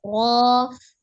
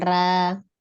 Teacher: Ya, ketika huruf ro berfathah dia tebal ya, tidak dibaca tipis, harus dibaca tebal. Ro bukan ra.